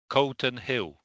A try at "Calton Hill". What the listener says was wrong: Yeah, Calton Hill. It's a clearer A sound. It's hill.